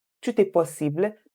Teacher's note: But because this is tout est possible, we're using T-O-U-T and there's an E afterward. So you pronounce it as tout est possible because of the liaison